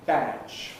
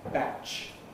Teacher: Badge, full length, batch, clipped. That's a short vowel, so the difference isn't so great, but it's there.